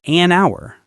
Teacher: The h is silent